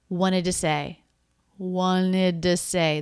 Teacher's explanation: this first t totally dropped that's pretty common in this word because it comes after an n